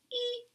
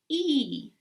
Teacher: when I make the e sound I am not relaxed my lips are spread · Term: tense e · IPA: /i:/